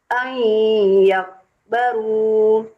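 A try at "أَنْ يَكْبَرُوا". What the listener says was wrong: kalau berhenti kan yakbar, bukan yakbaru toh?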